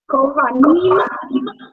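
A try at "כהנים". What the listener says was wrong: There you go. Good job.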